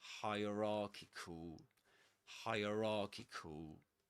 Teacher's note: Okay, so we say hierarchical, hierarchical. So the main difference between the word hierarchy and this one, hierarchical, is that the main stress goes on rarchical, ra.